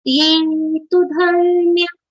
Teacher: ये तु धर्म्यामृतमिदम्. ये तु, ये letter has a long sound and the next letter tu has a short. So quick pronunciation for tu.